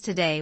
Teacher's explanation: with stress on the second syllable